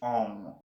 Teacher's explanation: na początku słychać czyste o a potem wyczuwasz taką blokadę jakby miało rozsadzić ci głowę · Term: nosówki